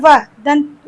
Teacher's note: व का उच्चारण दंत और ओष्ठ से होगा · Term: दंतोष्ठ